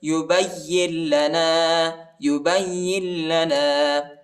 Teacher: ربک، ربک یبین لنا، یبین لنا، با کو یا کے ساتھ ملائیں گے، یا کو لام کے ساتھ ملائیں گے، نون نہیں پڑھا جاتا کیونکہ لام پر شد آیا ہے